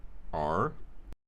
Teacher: for the third formant a retroflex r will take it through its full range of motion from its highest frequency to its lowest frequency